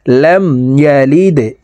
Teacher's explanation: লাম মিম জবর লাম, ইয়া জবর ইয়া, লাম দাল জেরে লিদে, লাম ইয়ালিদে। দাল কলকলার হরফ নিচের দিকে ধাবিত করে ধাক্কা দিয়ে উচ্চারণ করব।